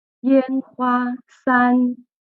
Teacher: all of them are high tones. Up, when you read it aloud, it's high pitch up there.